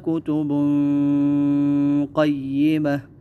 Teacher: کتب قیمہ غنہ ہوگا اور غنہ جو ہے موٹا والا ہوگا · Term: موٹا والا غنہ